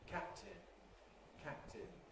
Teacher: what we get is a kind of overlapping of the articulations of the two plosives. Now, all plosives consist of an approach phase during which the articulators, the place where it's made, move together. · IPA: [ˈkæp̚tɪn]